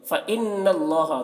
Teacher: फ़इन्नल्लाह, नून मुशद्दद है, नून में गुन्ना होगा, और अल्लाह कलाम को पुर पढ़ेंगे क्योंकि अल्लाह कलाम से पहले ज़बर है